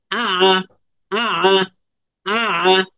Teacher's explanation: আইনের উচ্চারণটা কিন্তু গলার মাঝখান থেকে